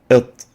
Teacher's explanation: It's like it, the T, but more emphatic. It, articulating between the alveolar part of the hard palate and the top of the tip of the tongue. Lingual alveolar letter, it.